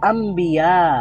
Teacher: ন নুন সাকিনের পরে আবার বা আছে তো এজন্য ন সাউন্ডটা ম সাউন্ড হয়ে গেছে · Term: ইকলাব